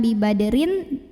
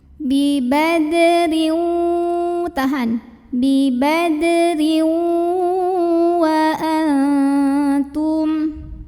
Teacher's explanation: masuk ke waw disertai dengan dengungan. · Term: idgham bi gunnah